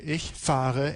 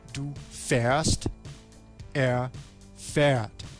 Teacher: So, in the first person singular, ich fahre, and all of the plurals, fahren, fahrt, and fahren, we have the a that is the same. However, in the second and third person singular, there's a change in the quality of the vowel and the verb stem. So a goes to a umlaut.